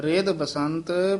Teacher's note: ਆਗ ਖੰਡਨਹਿ ਰਿਧ ਬਸੰਤ ਭੈ ਭੀਤ ਦੂਤਹ ਕਰਮ ਕਰਤ ਮਹਾ ਨਿਰਮਲੈਹੈ ਰਿਧ ਪੋਲਾ ਬੋਲਣਾ ਹੈ ਕਿਤੇ ਰਿਧ ਨਹੀਂ ਕਹਿ ਦੇਣਾ ਧੱਦਾ ਲਾ ਕੇ